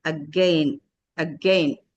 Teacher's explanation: This stroke indicates the stress for second syllable. And the first syllable is shwa, weak sound.